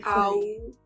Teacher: ow is a diphthong. So it goes from ah to oo. Open mouth ah, closing down to an oo.